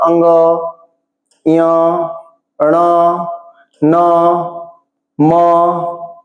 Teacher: अनुनासिक मतलब इनको बोलते समय नाक की भी सहायता लेनी पड़ती है जैसे म न है ना ञ ण तो नाक के बिना सहायता से नहीं बोल सकते।